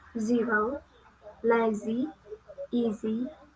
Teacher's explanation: Next is English consonant Z. It belongs to alveolar and fricative.